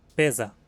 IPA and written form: pezɐ (besser)